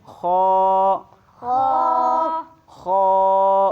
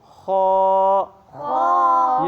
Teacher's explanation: اس کو جو ہے گردن کے اوپر کے حصے سے پڑھنا ہے۔ کہاں سے پڑھنا ہے؟